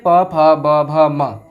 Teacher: और ओष्ठ में प फ ब भ म।